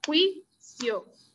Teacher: Y esta palabra tiene dos sílabas, juicio. Y entonces la mayor fuerza de acentuación está en la penúltima, es una palabra grave o llana